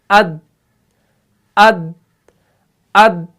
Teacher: آواز یہاں پر جو ہے نا وہ فوراً بند ہو جاتی ہے, وہ جلدی سٹاپ ہو جاتی ہے